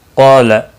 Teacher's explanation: قاف مستعلیہ ہے، پر پڑھا جائے گا